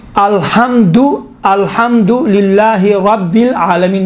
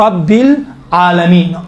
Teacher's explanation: रब रा को क्योंकि जबर है मोटा तलफ किया जाता है